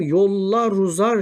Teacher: var fakat aşağıda ünsüz yumuşaması Söylenmemiş ulamaya bakalım yollar uzar şeklinde ünsüz harfle bitiyor Bu da Ünlü harfle bitiyor ikisini birleştirerek okumaya ulama diyoruz